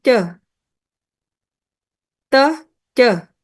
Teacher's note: teh sama ceh lebih ke alveolar